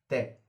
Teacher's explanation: जीभ दांतों पे लग रही है तय बोलते समय, तय जीभ का दांतों पे लगना, तो जहां जीभिया लग रही है वो उच्चारण स्थान है, ये उनके उच्चारण स्थान है, उच्चारण स्थान।